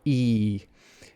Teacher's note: So the E vowel, that's the front high vowel